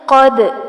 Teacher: قاف کو پر کیا جائے گا، دال پر کلکلا ہوگا